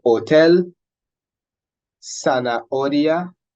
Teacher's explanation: the H actually is not pronounced in words. It actually has no sound. The pronunciation of the letter itself is ache, but in words, it has no sound. · It is mute, okay? So we pronounce these words as though the H weren't there